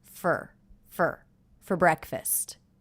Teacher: the word for that was reduced to fer fer fer very quick with the schwa our sound fer fer